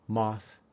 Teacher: the th in moth is unvoiced